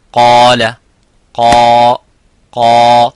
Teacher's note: so the alif is mufakham, it is a heavy because of the qaf